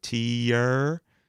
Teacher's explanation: Like tears is a very long, it's got a diphthong in the middle of it, meaning it moves from one vowel sound to another. Tear. So it's almost 2 syllables if you think about it.